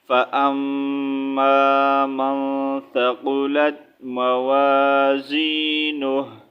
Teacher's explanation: last میں ہا کا ساؤنڈ نکالنا ہے، ہو نہیں ریڈ کرنا